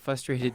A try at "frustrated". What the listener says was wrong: You said frustrated. You totally missed the R.